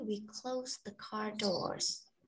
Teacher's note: the D sound in the word close is disappeared.